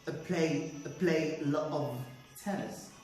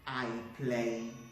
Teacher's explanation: i replaced the vowel i to uh that's the schwa